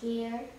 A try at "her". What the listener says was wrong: Here would have a silent E on the end of it. So this just has a different sound. When ER goes together, look, it's Erline, and she's very mean. She growls. So ER makes a growling sound.